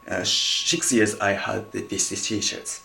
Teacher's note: basically VE or F can be cancelled if it placed just before the consonant, in this case H. So he can say 6 years I had these t-shirts, okay?